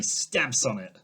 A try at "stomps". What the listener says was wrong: Stamps? It's stomp. Well, it sounds like you're saying stamp. Stomp.